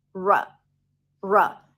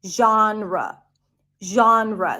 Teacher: The second syllable is quick and short. It's an R sound and a schwa.